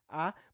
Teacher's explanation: E isso acontece com diversas palavras, como por exemplo rapaz, que acaba tendo por esse som S, som fricativo no final, né, que é representado na grafia por Z, essa ditongação, já que nós também passamos de uma vogal, aliás, bem baixa, né, que é o A, que é a mandíbula bem abaixada aqui, bem aberta